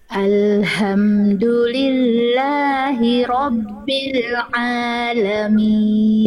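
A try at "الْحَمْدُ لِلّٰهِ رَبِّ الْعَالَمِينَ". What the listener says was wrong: ya ini sudah lebih bagus pertahankan dulu yang ini ya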